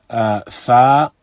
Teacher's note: fa is recited by bringing the upper incisors down to the inside of the lower lip